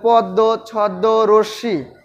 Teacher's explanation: শব্দের মধ্যে বা শেষে ম ফলা যুক্ত হলে সংযুক্ত ব্যঞ্জনে দ্বিত্ব উচ্চারিত হয়ে থাকে